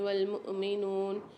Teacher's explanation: مؤمنون میں حمزہ پر سکون ہے، جھٹکا دے کے پڑھیں گے